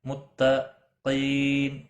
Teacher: قاف مستعلیہ میں سے ہے، موٹا پڑھا جائے گا